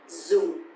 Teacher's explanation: because the tone mark here is dấu huyền, so it's going to be down a little bit